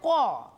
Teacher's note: কটা উচ্চারণ করতে গেলে ক শেষে কে আসছে, অ আসছে